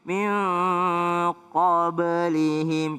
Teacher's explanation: Iya, ada huruf ba. Ba itu qalqalah. Jadi ada e-nya sedikit.